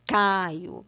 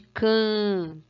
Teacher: O N faz esse A ser pronunciado an, que aí na palavra Caio, que não tem N, não se pronuncia Caio, né?